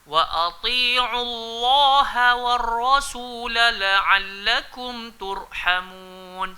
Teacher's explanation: Lafzul jalalah, nama Allah memang kita kena sebut tebal, tapi ha tu kita kena ingat dia huruf nipis